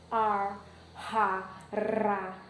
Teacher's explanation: todos os R's, todos os sons, fonemas que representam o R, ar, ra, ra, são vibrantes